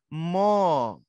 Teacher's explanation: দেখো ঠোঁটে আইসা শেষমেষ এক জায়গায় এসে বাঁধার সম্মুখীন হইলো